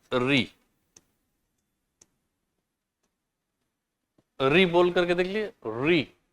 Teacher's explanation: री बोलते समय जीभ हल्की सी आप देखेंगे कि ऊपर वाले सरफेस के पास जाती है, री। ठीक है, वाइब्रेट करती। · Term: मूर्धन्य